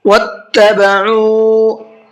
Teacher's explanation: عین کو حلق سے نکالنا ہے اور ساتھ ساتھ کھینچ کر کے بھی پڑھنا ہے، اس لیے کہ یہاں پر واو مدہ کا قاعدہ ہے، واو ساکن ہے اور اس سے پہلے پیش ہے۔